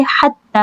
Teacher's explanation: حتی الف صغیرہ ہے، دو حرکہ لمبا۔